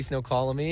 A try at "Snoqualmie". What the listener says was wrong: it's Snoqualmie, dummy. Snoqualmie.